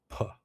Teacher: Keep your jaw relaxed. And there's a strong burst of air when we release our lips. P. The p sound is voiceless. · The p sound is voiceless. That means you don't feel any vibration in your throat. If you touch your throat while you're saying the p, you won't feel any movement. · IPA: /p/